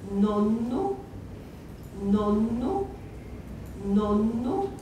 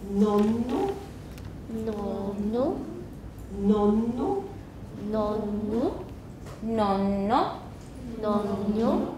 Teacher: that N is lengthened. It's about twice as long as it would be if it were not a geminate.